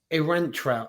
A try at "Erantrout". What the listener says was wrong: You're putting the emphasis on the A. It's Erantrout.